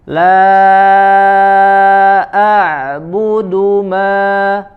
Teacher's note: La a'budu ya, tidak terputus suaranya ya. Huruf ain punya sifat bainiyah ya, di antara syiddah dan rokhawah. Mengalir suaranya di makhraj sedikit.